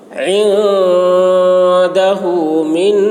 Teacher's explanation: نون مشدد غنہ ہوگا